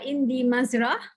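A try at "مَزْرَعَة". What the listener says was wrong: Ain hujung dia. Ain.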